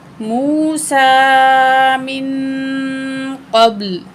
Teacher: सुइला मूसा मिन क़ब्लु, यहाँ भी नून साकिन के बाद क़ाफ, मोटा काफ हरूफ इख्फा में से है तो नून की आवाज़ को नाक में छुपा के पढ़ेंगे